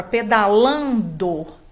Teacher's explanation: o ar saindo e a palavra sendo nasalizada o ar saindo pelas narinas